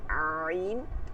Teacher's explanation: আইন চাপ দিয়ে নিচের দিকে নিয়ে আসবেন